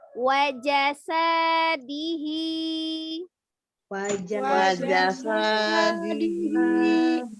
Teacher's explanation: wa pendek, ja-nya pendek, sa-nya baru panjang.